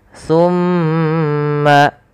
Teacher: Kemudian pada lafal ma atau summa itu ada bacaan namanya gunnah, yaitu suara mimnya ditahan sepanjang 2 harokat. Summa, baru alirkan.